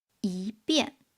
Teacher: When 一 is followed by the fourth tone, then it changes into the second tone. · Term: Tone Sandhi of 一